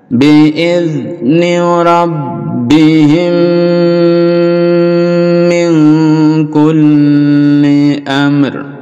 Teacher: mim sukun bertemu dengan mim, jadi dilebur jadi satu, idgham mimi, lalu didengungkan dan dipanjangkan dengungnya.